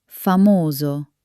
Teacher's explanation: Hear that round beautiful o at the end.